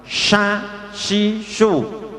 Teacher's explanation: Kalau shin ini tengahnya tidak nempel karena untuk keluar ada sifat tafasyi, keluarnya nafas yang banyak